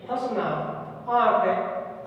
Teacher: अनुनासिक जो ध्वनि है, इस ध्वनि का उच्चारण मुख एवं नासिका दोनों से होता है।